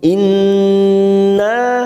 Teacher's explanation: Nun yang bertasdid gunnah musaddada kita tekan 3 ketuk. Inna na fathah diikuti alif 2 harokat.